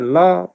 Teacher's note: ल उच्चारण हुँदा दुईतिरबाट हावा चाहिँ बाहिर गएको हामी स्पष्टै अनुभव गर्दछौँ। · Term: पार्श्विक व्यञ्जन